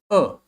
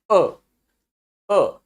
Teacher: ध्यान दीजिए, अ, छोटा आ। अगर आप हिंदी में बात करो तो छोटा आ विद अ लिटिल यू, ये इसका प्रोनाउंसिएशन है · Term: SCHWA